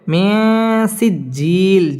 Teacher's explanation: নুন সাকিনের বামে সিন আসছে সিন ইকফার হরফ গুন্না লুকিয়ে করতে হবে